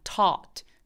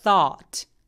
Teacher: 요거 모음 소리는 다 똑같은데 T하고 TH 차이입니다.